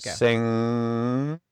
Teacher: with the NG sound, the back of the tongue is pulled up into the top of the mouth cave, and that creates a very free and very healthy sound around the vocal cords.